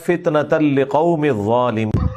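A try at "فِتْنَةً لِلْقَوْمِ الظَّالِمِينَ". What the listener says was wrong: اور لام دو نا, فتنة للقوم نہیں ہے, للقوم الظالمین.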